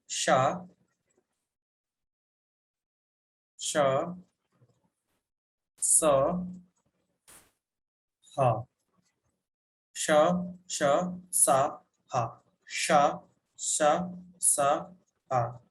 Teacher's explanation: इन सबको बोल को देखिए, आपको लग रहा होगा तालु और जुबान के बीच में एकदम घर्षण होते हुए वायु निकल रही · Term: संघर्षी व्यंजन